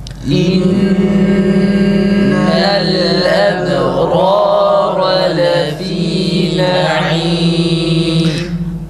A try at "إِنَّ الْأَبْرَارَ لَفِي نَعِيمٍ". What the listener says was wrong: Arkadaşlar cezimde duralım sonra hemzeyi okuyalım yoksa yanlış okumuş oluruz. İnnel leb değil. Böyle okuduğumuz zaman farkında olmadan Verş rivayetine göre okumuş oluruz. Biz şu an o Asım kıraatine göre okuduğumuz için doğru değil.